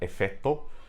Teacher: So again there's that double T sound where the consonant cluster used to be